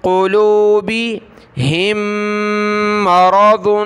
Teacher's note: ہا کو دوسری میم کے ساتھ ملائیں گے، ناک میں آواز پیدا کریں گے